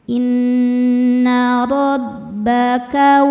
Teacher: Inna rabbaka. Ro dibaca tafkhim karena berharokat fathah. Cara membacanya ro ditebalkan.